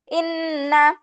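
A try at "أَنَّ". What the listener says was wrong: হামজার উপরে জবর আছে না, তাহলে ইন্না কেমনে হয়? নুনে টান হবে না? গুন্না হবে না? নুনে টান হচ্ছে না তো, একসঙ্গে দাও, গুন্না আবার টান। আন্না।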